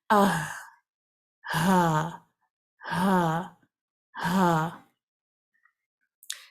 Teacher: ہا ساکنہ کو ادا کرتے وقت آواز کو تھوڑی دیر سانس کے ساتھ جاری رکھیں گے آپ، اس کو فوراً سے چھوڑنا نہیں کرنا۔